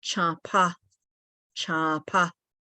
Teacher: So the PA is explosive